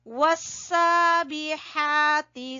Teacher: ہا کو وسط حلق سے نکالیں گے